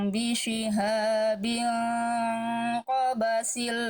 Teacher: dibacanya samar dibaca dengung ditahan dua harakat. Cuman ikhfa hakiki itu harus sambil bersiap-siap melafalkan huruf berikutnya.